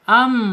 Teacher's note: Makhraj mim ini alkhaisum itu masuk ke hidung ya.